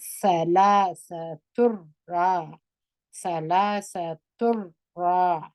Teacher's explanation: را درنه، را زور لري، را درنه ویل کېږي. الف مده دی، دوه حرکت یې کش کړي.